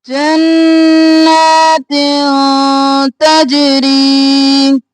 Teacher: گے، جنات تنوین ہے اخفا تل تجری نہیں کرنا، جنات تجری جیم قلقلہ ری باریک اور ایک الف کے برابر کھینچیں گے